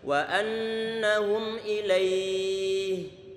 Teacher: Wa annahum ilaihi, boleh panjangkan 2 harokat, boleh 4, boleh 5 harokat. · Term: matlin